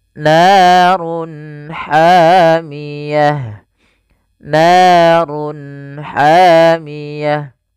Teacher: Run ketemu ha, jelas kita namakan dengan izhar halqi. Suaranya harus dibaca dengan jelas. Izhar jelas, halq karena dia bertemu dengan huruf-huruf halq setelahnya, yaitu huruf ha, maka harus dibaca dengan jelas.